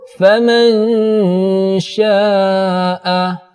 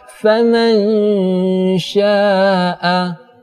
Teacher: Cara membacanya, suara disamarkan mendekati huruf ny. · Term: ikhfa awsad